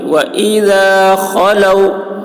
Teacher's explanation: خو حلق سے ادا کریں گے، موٹی آواز ہوگی